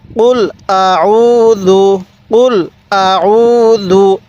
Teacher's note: কুল হামজা জবর আল আইন ওয়াও পেশ এক আলিফ টান দিব পেশের পরে ওয়াও সাকিন এক আলিফ টানতে হবে